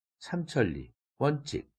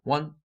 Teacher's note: 소리가 크게 나죠. 원칙 할 때 원 이것이 칙 이거보다 소리도 라우드하고 또 피치가 올라갔어요. 도레미파로 따지면 미래, 레더 이렇게 단계가 있게 발음되죠.